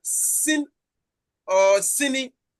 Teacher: The s is onset, and then the e is the nucleus. Then the second syllable, the nasal, the alveolar nasal is the onset, and then e is the nucleus.